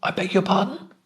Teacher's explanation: the voice goes up at the end